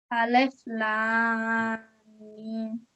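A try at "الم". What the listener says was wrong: Okay, so you need to try and elongate both of those sounds.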